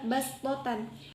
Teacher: di dalam Al-Quran tertulis huruf shod, tetapi dibacanya sin, sehingga dibaca bastotan.